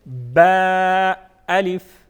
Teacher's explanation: बा को एक अलिफ के बराबर खींच के पढ़ेंगे, अलिफ को जल्दी पढ़ेंगे, बा अलिफ। नेक्स्ट लेटर नून अलिफ।